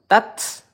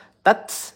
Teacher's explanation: udara lembut yang keluar. Kita berikan desisan dikit. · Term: ta sukun